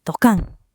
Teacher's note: The word grew a beat in the middle